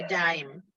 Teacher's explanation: the accent becomes on the next to the last syllable instead of the last syllable. Normally, the rule is in Hebrew the accent is on the last syllable, but when you have a metek, it goes to that syllable.